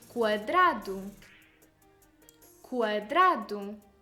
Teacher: For example, quadrado, quadrado, square. You hear the sound increasing as it moves from U to A, quadrado. In this sense, U is the semivowel and A the vowel. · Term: increasing diphthong